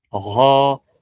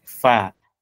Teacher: ghain itoke nzito gho alafu fa iwe nyepesi fa gho fa gho fa ra iwe nzito ina fatha gho